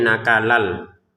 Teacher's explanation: Jadi yang tulisannya nakalan, lan ya kan, kita masukkan tanwinnya ke lam sehingga cara bacanya nakalal